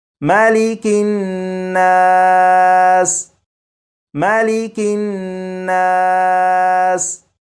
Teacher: یہ نون مشدد ہے، نون مشدد پر غنہ بھی کریں گے